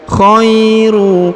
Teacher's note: Huruf kha diayun sekali karena di depannya terdapat ya sukun.